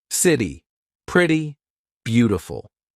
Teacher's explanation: All right, but it's called the flap T. This is when T sounds like a very quick D. Very big in American pronunciation. So when the letter T is in between two vowel sounds or dip thongs.